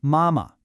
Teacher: It's a first tone followed by a neutral tone.